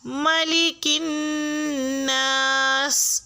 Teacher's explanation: آیا نمبر 2، ملک الناس، اس میں لام کے نیچے زیر ہے، لام کو باریک پڑھا جائے گا اور الناس کا نون مشدد ہے، یہاں پہ بھی غنہ کیا جائے گا یعنی کہ آواز کو ناک میں ٹھہرایا جائے گا